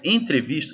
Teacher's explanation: esse n que aparece aí é apenas uma nasalização do E